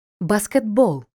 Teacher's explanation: т одзвінчується і вимовляється як д